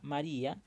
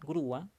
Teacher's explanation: en todos estos casos, la mayor fuerza de voz está en una vocal cerrada acompañada de una abierta. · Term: hiato acentual